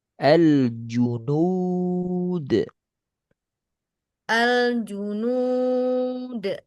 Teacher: Angkat tengah lidah ju